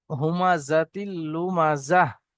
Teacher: কিন্তু যখন আমরা কি পড়েছিলাম ওয়াকফের কায়দাতে, যখন গোল তার উপরে সাকিন করা হবে তখন এখানে হা হয়ে যায়। গোল তায়ের উপরে যখন ওয়াকফ করা হবে এবং দাঁড়ানো হবে তখন কি হয়ে যাবে, সাকিন হয়ে যাবে এখানে দুজাবর না আসার কারণে।